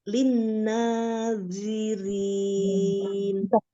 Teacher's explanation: Dia tebal. Ujung lidahnya dikeluarkan sedikit. Ujung lidah ada di ujung gigi seri bagian atas ya.